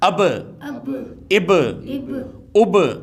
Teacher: واضح طور پہ یعنی کہ قلقلہ کے ساتھ پڑھا جائے گا، واضح طور پہ یہاں پہ قلقلہ ہوگا